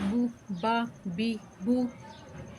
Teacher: با ہونٹوں کی خشکی والے حصے سے ادا ہوتا ہے